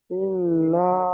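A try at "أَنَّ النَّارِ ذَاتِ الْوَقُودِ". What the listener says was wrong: ইন্না নয়, আন, আন্নারি জাতিল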